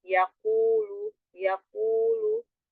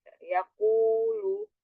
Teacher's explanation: pangkal lidah bertemu dengan langit-langit yang lembek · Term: huruf qof